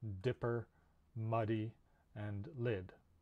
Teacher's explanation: This sound is voiced, and otherwise it's like T. It's a stop, and it's made at the alveolar ridge. Okay, so this is the voiced version of voiceless T. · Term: the d sound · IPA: /d/